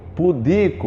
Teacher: Pudico é paroxítona no I